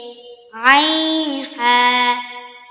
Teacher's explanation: হলকের মধ্যখান হইতে